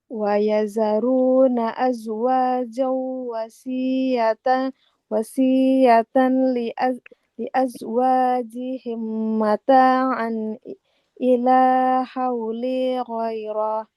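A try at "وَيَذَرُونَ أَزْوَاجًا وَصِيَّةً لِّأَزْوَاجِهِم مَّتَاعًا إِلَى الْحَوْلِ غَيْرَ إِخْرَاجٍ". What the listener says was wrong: Tempat berhentinya nggak boleh digoiro Ibu. Ikhroj. Kan sebentar lagi wakaf ya di sini. Maka habiskan sampai wakafnya.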